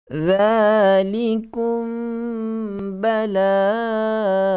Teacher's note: Hukumnya adalah ikhfa syafawi. Okey, sembunyikan bunyi mim itu ke dalam huruf ba